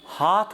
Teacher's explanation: আপনি নিশ্চয়ই জানেন যে মধ্য বাংলার বহু টেক্সটে কিন্তু হয়াকার থ দিয়ে লেখা হতো, কিন্তু আস্তে আস্তে দেখুন হাত উচ্চারণটা আমাদের হাত থেকে উচ্চারণটা আস্তে আস্তে ওই ধ্বনি শব্দের শেষের থ তার মহাপ্রাণতা হারিয়ে অল্প প্রাণতায় পরিণত হয়েছে